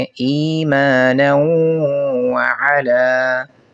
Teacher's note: تیسری مثال کے اندر نون تنوین کے بعد واو ہے، یہاں پر نون کا واو میں ادغام کریں گے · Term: ادغام مع غنہ